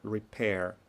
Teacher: So usually prefixes are not stressed. So we need to put stress on pair. Repair. Второй слог под ударением.